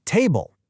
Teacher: You have to punch that first syllable hard with your voice. Table. That extra push of air flow and volume. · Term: word stress